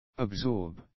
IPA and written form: əbˈsɔ:bz (absorbs)